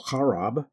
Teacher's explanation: with a fine roll of the initial guttural